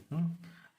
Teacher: री बोलेंगे तो आपका जीभ थोड़ा सा मुड़ेगा, मूर्धन्य होगा, मुड़ेगा थोड़ा सा, जीभ ऐसे थोड़ा मुड़ेगा, ऐसे मुड़ेगा मूर्धा, इसको री बोलते हैं, री।